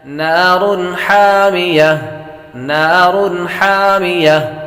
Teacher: تنوین کے بعد ہا حروف حلقے میں سے آ رہے تو غنہ نہیں کریں گے